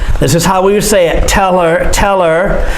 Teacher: cut the h off